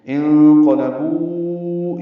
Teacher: قاف پر ہے، لام باریک ہے، بو میں واو مدہ ہے اور آگے حمزہ ہے، الا میں کھڑا زبر ہے اور پھر آگے حمزہ ہے، دونوں کلموں میں مد منفصل ہوگی. انقلبوا، یہ بو کو 4 حرکات لمبا کریں گے، الا لام کو 4 حرکات لمبا کریں گے، ملا کے پڑھیں گے